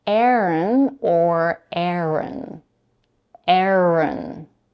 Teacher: both names are pronounced with two syllables, with a stress on the first one. The second syllable is unstressed.